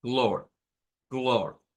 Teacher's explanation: Y tiene un sonido especial, y es el sonido de la O corta del inglés, esa O recortada más una R